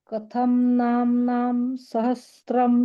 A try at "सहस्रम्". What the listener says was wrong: स्वम सहस्त्रम नाही म्हणायचं सहस््रम